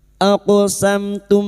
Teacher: Aqsamtum mim sukun bertemu ta, mim sukun bertemu lam, masing-masing mim sukun dibaca jelas tanpa mendengung, idhar syafawi